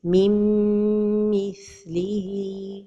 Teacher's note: Another mistake is to pronounce the noon, min mithlihi. And the noon is not pronounced when the idgham is with the letter mim